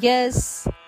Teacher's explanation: ಯದ ನಂತರ ಬರುವ ವಿಸರ್ಗದ ಉಚ್ಚಾರಣೆ ಸದಂತೆ